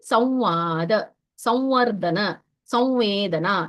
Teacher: ಅದು ವ ಅಲ್ಲ ವ ಮೂಗಿನಿಂದ ಬರುವದು